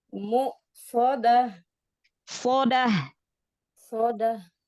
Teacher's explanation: Iya, ditebalkan angkat pangkal lidah. Sot kan huruf tebal ya.